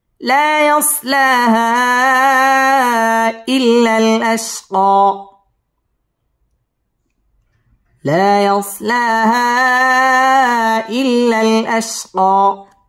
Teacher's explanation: لا يصلاها إلا الأشقى، لا يصلاها إلا الأشقى. লা মধ্যে তাবাই একালিফ টান দিয়ে পড়তে হবে, ইয়াসলা মধ্যে তাবাই একালিফ টেনে পড়তে হবে।